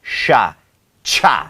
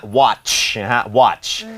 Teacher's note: CHนั้นจริงๆแล้วเป็นเสียงควบกล้ำTตามด้วยSH